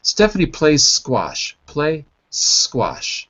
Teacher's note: I literally say play instead of plays because when I'm speaking quickly it's difficult to make that sound